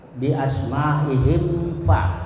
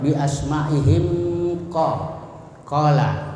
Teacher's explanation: mim sukun disuarakan dengan terang, ya terang izhar dan jelas di bibir serta mulut tertutup. Dan harus diperjelas lagi bila bertemu dengan huruf waw dan atau fa. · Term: izhar syafawi